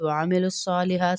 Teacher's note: صاد کے اوپر کھڑا زبر ہے، پھر کھینچیں گے اس کو